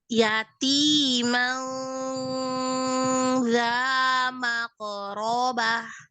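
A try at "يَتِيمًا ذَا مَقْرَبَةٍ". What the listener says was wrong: Yati, tipiskan lagi. Tipiskan lagi ikhfanya. Zal kan huruf tipis. Yatiman bukan mang. Tahan gunah ikhfanya.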